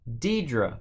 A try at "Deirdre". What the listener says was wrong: Deirdre. Isn't there an R in there?